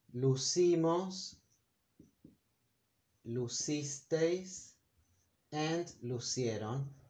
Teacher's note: the stress now will fall in the ending